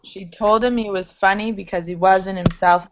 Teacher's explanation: i tried to get rid of the h's